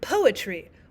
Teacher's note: we have the stressed syllable at the very beginning and then we have unstressed syllables